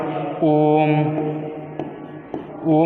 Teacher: इसमें आप लोग का 3 मात्रा का समय लग रहा है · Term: प्लुत स्वर